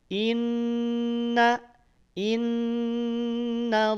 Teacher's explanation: maka saat Inna jangan dulu dinaikkan pangkal lidahnya Inna Inna Innallaha baru saat tiba pada lafaz Allah naikin pangkal lidahnya